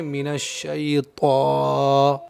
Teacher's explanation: زبان کی نوک کو اوپر کے دانتوں کی جڑ پر ٹچ کرتے ہیں اور پوری زبان کو اوپر کے تالوں پر چپکا دیتے ہیں